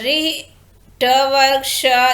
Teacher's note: रि, ट वर्ग, श, ये सब आपको मूर्धा से बोले जाते हैं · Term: मूर्धन्य वर्ण